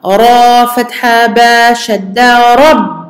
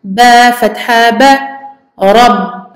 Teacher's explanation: on fait attention à bloquer donc sur le ba en plein milieu de la shadda